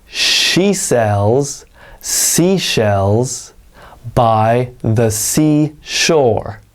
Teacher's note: when it comes to the sh sound you'll notice that if you watch my lips it's like an exaggerated kiss sound almost